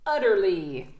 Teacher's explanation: accentuation là, boum, première voyelle